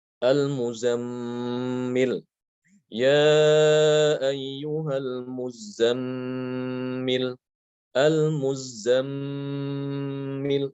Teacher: Itu mimnya ditahan gunanya. Jangan terburu-buru, ya, diucapkan.